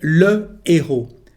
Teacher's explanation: The unplugged H means that there is no liaison between the two words. There is a pause when you speak.